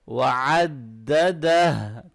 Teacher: وعددہ clear کر کے آخر میں ہا کا آواز کو ہیوی کر کے آپ نے ادا کرنا ہے